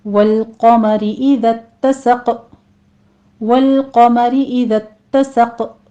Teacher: वल क़मरी इज़ा तसक़, वल लाम को स्टॉप करें, क़ाफ को पुर पढ़ना है, रॉ बारीक पढ़ी जाएगी। इज़ा तसक़, ताकि पर तशदीद अदा करते हुए आगे फिर हमने क़ाफ के ऊपर कलकला कर देना है।